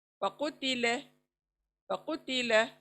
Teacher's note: लाम को कभी भी मोटा नहीं पढ़ेंगे, पतला होगा लाम